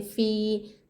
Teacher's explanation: या साकिन से पहले हरकत क्या है, ज़ेर है, तो यहाँ पर भी या मद्दा हो रहा है। एक अलिफ की मकदार फ़ी को खींचेंगे